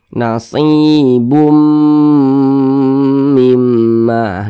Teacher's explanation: nasibn jangan Bun tapi bumah kemudian dengungkan nasibum mimma didengungkan ya suaranya itu kita tahan kita panjangkan sejenak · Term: idgham bhunah